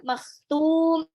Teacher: Ingat itu ada kha ngorok ya.